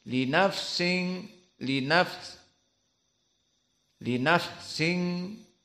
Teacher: dan di sini makhrajnya Dari kisu dari hidung karena ada gunah karena ikhfa makhrajnya gunah dari hidung